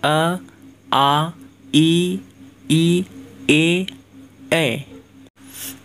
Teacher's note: जिन स्वरों के उच्चारण में हमारे होठ गोलाकार ना हो वो हो जाएगा अवृत्तमुखी